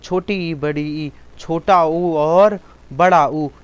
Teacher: छोटी ई, बड़ी ई, छोटा ऊ और बड़ा ऊ, ये संवृत वर्ड हैं